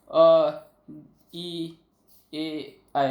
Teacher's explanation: जिन स्वरों के उच्चारण में जिह्वा का आगे का भाग सक्रिय रहता है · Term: अग्रस्वर